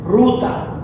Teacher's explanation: la R tiene una formación muy especial, es con la garganta